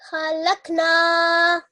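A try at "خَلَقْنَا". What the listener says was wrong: Yeah, just the ha, I've said before as well, is a round and thick letter. So it shouldn't be a kha, it should be thicker and rounder in pronunciation. So it should be khalaqna.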